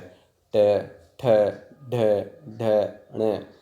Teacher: जो हमारी जीव है वो हमारे तालव्य भाग से थोड़ा पीछे टकरा रही है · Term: मूर्धा